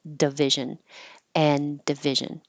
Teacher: putting your tongue in the D position and and then not releasing it